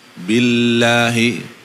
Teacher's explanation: Jadi lam boleh ke atas tapi ke depan, bukan ke tengah. Ya. Jadi lamnya ditahan ke depan. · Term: lam Quran